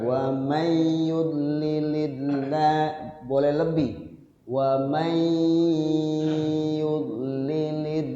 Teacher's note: Kemudian wa may yudlilillahu wa may nun ketemu ya idgham digun. Nah, nunnya tidak dibaca, diidghamkan ke huruf ya sambil digunnah, dilaguhkan. Ya, sekurang-kurangnya dilagukannya dua ketukan.